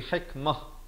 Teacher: kalau waqaf ta marbutah, dia tak jadi hikmat tapi hikmah, ditukarkan kepada bunyi ha yang simpul itu